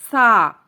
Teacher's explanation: زبان کی نوک جب اوپر کے 2 دانتوں سے لگے تو سا ادا ہوتا ہے، نرمی سے پڑھنا ہے، اس میں سیٹی کی آواز نہیں آنی چاہیے